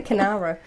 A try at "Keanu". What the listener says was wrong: There's not even an R in there.